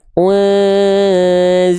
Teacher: Tadi di sini ada ikhfa, nun sukun bertemu dengan zai, ikhfa hakiki, ya artinya dia dibaca samarkan dengungkan, ditahan 2 harokat.